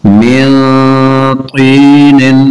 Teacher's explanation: نون ساکن کے بعد طا حروف اخفاء، غنہ کر کے پڑھیں گے